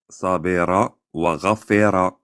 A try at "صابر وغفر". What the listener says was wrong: Tu le sors pas bien la voyelle, on voit qu'elle sort pas tout en dessous de la gorge.